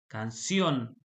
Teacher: Canción, también levanto la voz en la última sílaba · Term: aguda